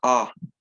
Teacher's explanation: this first a with the stabs on top is pronounced ah as in like father